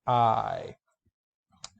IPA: aɪ